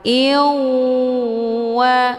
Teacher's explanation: Cara bacanya, tanwinnya dileburkan ke dalam huruf waw dengan cara ditekan kemudian ditahan lebih kurang 2 kali ketukan. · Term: idgham bi gunnah